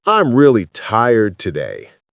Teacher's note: Voice goes down on day.